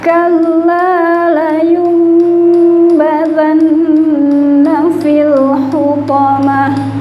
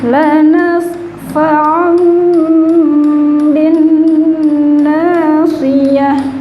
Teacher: suara nun atau tanwin ketika di depannya ada huruf ba, nun sukun ya Bu ya, maka berubah menjadi huruf mim dan ditahan 3 harokat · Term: iqlab